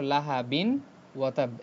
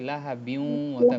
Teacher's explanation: merge করতে সময় একটা গুন্না আসছে